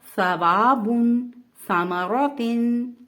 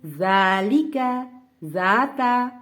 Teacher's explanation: सा और जाल को हमने नहायत नरमी से पढ़ा है और बारीक पढ़ा है।